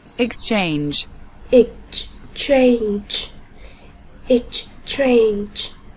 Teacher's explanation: Chúng ta có từ exchange, nhấn âm tiết số 2.